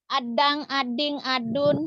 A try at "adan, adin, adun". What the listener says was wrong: Kok adang? Aneh nih. Adang. Dari mana engnya? Adan, adin, adun. Jangan ada engnya. Aduh, orang Bugis ini adang, ading, adun. Nggak ada engnya.